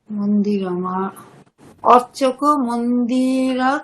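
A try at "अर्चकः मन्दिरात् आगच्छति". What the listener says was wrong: আর্চকঃ, madam বিসর্গ উচ্চারণ করতে হবে, আপনার বিসর্গ উচ্চারণ হচ্ছে না।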